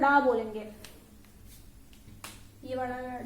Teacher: देखिए उत्क्षिप्त व्यंजन वो होते हैं जिसमें जो हमारी जीभ है उसकी जो नोक है वो उल्टी होती है और फिर हमारे तालू से टच करती है। तालू जो होता है वो जीभ के ऊपर वाला जस्ट हिस्सा जो मुंह के ऊपर यहाँ पर होता है उससे टच करती है और झटके के साथ जो है वो हट जाती है।